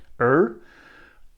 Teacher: the r with the tip of the tongue pointing backwards